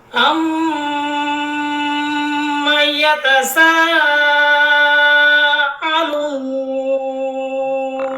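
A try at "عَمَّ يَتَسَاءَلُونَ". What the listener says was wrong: আইনটা কিন্তু পরিষ্কার বোঝা যায়নি, হ্যাঁ। আইনটা আবার একটু সুন্দর করে বলেন। আম্মা, মুখটা খুইলা আইনের মধ্যে চাপ দিয়ে বের করেন আওয়াজটা। আম্মা।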